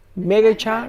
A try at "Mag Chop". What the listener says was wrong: You added an extra syllable, of course.